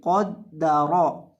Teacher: कौफ को और रॉ को इन दोनों को मोटा करके पढ़ेंगे।